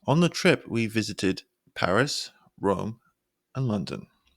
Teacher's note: We use an upward pitch to show that there are more items coming, while the final downward pitch of inflection at the end shows that it's the end of the list.